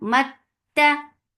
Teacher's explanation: Mat for fatha upon jaws attached with ta. Ta will get sifa of shidda. There is no flow of sound. Mat ta. Ta for fatha upon your jaws.